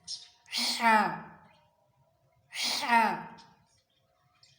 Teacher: ہا کی آواز خوب حلق سے، حلق کے بیچ والے حصے سے